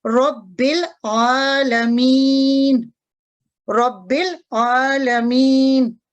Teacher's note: तो रब्बिल आलमीन में भी देखते हैं कि बा मुतहरिक है और लाम साकिन है, यानी कि मुतहरिक और साकिन के दरमियान जो अलिफ है ये वस्ल करने की सूरत में अदा नहीं किया जाएगा। · तो वस्ल की सूरत में ये जो अलिफ है ये गिर जाएगा, अदायगी में नहीं आएगा।